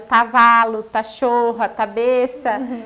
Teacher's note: quando ele era menorzinho, tinha uns 2 anos, ele trocava o K pelo tá. Então, era o tavalo, tachorra, tabeça. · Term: trocas na fala